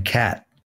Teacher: Our last front vowel is the low, front, lax, unrounded A, as in cat.